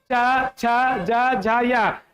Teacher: च वर्ग तालू से होगा